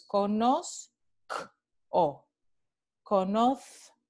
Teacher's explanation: la adición de esta consonante oclusiva velar sorda K. Entonces, conozco, conozco, esta adición en la consonante de la raíz.